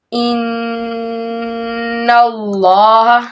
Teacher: کم از کم 2-3-4 الف کی مقدار کے برابر نا اپنی زبان کو تالوں سے لگائے رکھے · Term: نون مشدد